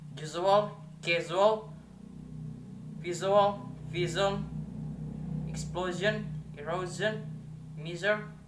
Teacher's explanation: a voiced palatal alveolar fricative sound z